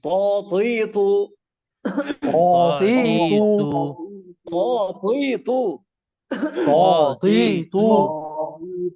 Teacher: এটা মোটা, মাখরাজ কিন্তু একই, যায় উচ্চারণের স্থান কিন্তু একটাই। জিবার আগা সামনের উপরে দুই দাঁতের গোড়া, তা এবং ত একই জায়গায়, মাখরাজ একটাই। তবে মোটা এবং পাতলার পার্থক্য।